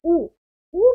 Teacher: उ बोलते समय हमारा मुंह गोल हो गया। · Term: वृत्त मुखी